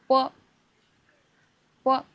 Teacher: B, lips close completely. Air is released forward. · Bilabial sounds are made with both lips. Your tongue actually is relaxed. It does almost nothing here.